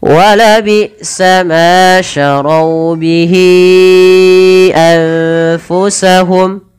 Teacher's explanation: ada nun sukun bertemu fa, samarkan ke fa